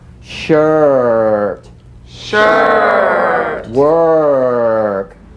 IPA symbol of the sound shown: ɜː